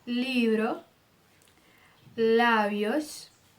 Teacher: Os lábios, eles mal se encostam para você falar o B.